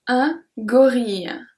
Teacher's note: So here I pronounce I-L-L-E, I pronounce like a long I.